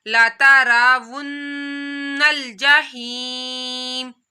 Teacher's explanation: नून के ऊपर तशदीद है तो यहाँ पर गुन्ना करना है, नाक में आवाज़ लेकर जानी है